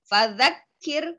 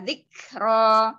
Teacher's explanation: Fadzakkir, kalau di sidah tidak usah dipantulkan tetapi langsung fadzakkir, kalau di sukun ada anginnya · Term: kaf disukun